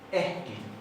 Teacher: la doble K se pronuncia como HK. Entonces acá hay una aspirada, no es ekki.